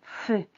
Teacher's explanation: sientes que hay como una presión entre dientes hay como un aire que pasa pero bueno no tan fácilmente que tu labio también se mueve